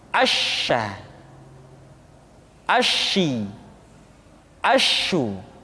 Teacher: Dan sifat yang dimiliki oleh huruf sya yang paling nampak adalah apa yang disebut dengan sifat at-tafashi, yaitu menyebarnya angin di dalam mulut kita.